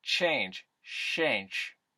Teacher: ch becomes an sh at the beginning of word